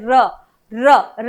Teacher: कंपन करना पड़ता है उसे हम प्रक पित कहते हैं जैसे र र र के उच्चारण के दौरान आपकी जिव्या में कंपन महसूस होता है इसीलिए हम उसे प्रक पित वर्ण के नाम से जानते हैं